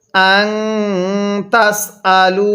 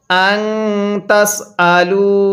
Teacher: আং তাস আলু, এই নুন সাকিনের পরে তাটি হলো ইকফার হরফ, এই জন্য নুন সাকিনটা গুনাহ করে পড়ছি।